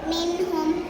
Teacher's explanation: நூன் சாக்கினையும் தன்வீனையும் குன்னா செய்யாத கிளியராக ஓதணும் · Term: இல்ஹார்